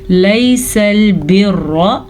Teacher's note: रॉ को लंबा नहीं करना, लंबा खड़ी ज़बर या अलिफ मद्दा को किया जाता है, ये सिर्फ़ और सिर्फ ज़बर है